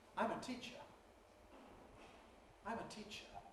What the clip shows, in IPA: ˈtiʧə